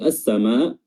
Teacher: Lalu as-sama di sini ada mad. Madnya yang panjangnya lebih dari 2 harokat dan penyebab dia panjangnya seperti itu adanya huruf hamzah pada kata as-sama. Adanya huruf hamzah, mad bertemu dengan huruf hamzah. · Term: mad wajib muttasil